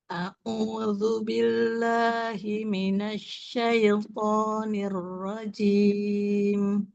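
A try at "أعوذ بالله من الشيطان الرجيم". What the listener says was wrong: Dibuka lagi fathahnya ya. A'udzu billahi minasyaitonir rajim. Ro-nya jangan buru-buru. Kemudian sin-nya tajamkan lagi ya, sofir suaranya ya.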